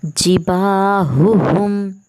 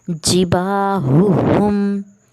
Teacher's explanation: अब 2 हरूफ़ हल्क़ी हैं, हा और हा दोनों पे पेश है। अब दोनों को अलग अलग और साफ़ और वाज़ेह पढ़ना है